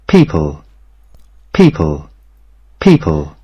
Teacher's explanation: প্রথমে যে সাউন্ডটা করছে এটা হচ্ছে ফ বলছে, আর পরের যে পটা আছে সেটাকে বলছে প।